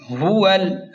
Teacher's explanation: یہاں واو کو لام کے ساتھ ڈائریکٹ ملا کر پڑھیں گے